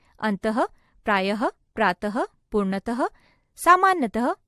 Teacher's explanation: विसर्ग कहते हैं विसर्ग का उच्चारण कंठ से हलके ह समान होता है